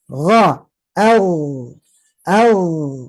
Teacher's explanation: Nah, coba dicek di waktu mati. Gha, mengalir tapi tidak menghembus. Kalau menghembus jadi kha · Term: rokhawah